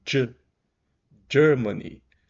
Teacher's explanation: não é só o g que a gente tá acostumado em português acrescenta um D aqui na pronúncia